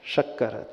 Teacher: जब हमारी जीभ तालू को टच करती है तो उसे शक्कर का श कहा जाता है, यानी वो तालव्य श कहा जाता है